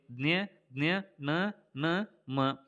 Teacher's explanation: ಮೂಗು ಸಹಾಯದಿಂದ ಹುಟ್ಟುತ್ತವೆ. ಮೂಗಿನ ಸಹಾಯದಿಂದ ಹುಟ್ಟುವಂಥ ಅಕ್ಷರಗಳನ್ನು ನಾವು ಅನುನಾಸಿಕಗಳಂತೇಳಿ ಕರೆಯುತ್ತೇವೆ.